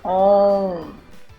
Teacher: Na palavra balões, a letra O tem o som nasal. Perceba que o som sai pela boca mais fechado e uma leve vibração pelo nariz.